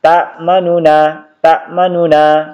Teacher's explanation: harokat dhamma pada nu dibaca tidak sempurna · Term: raum